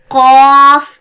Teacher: pronounced from the root of the tongue, touching the soft part of the palate, top of the mouth. जुबान की जड़ यानी जुबान का आखिरी हिस्सा जब तालू के नरम हिस्से से टच करे तो हम खौफ अदा करते हैं. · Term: मोटा क़ाफ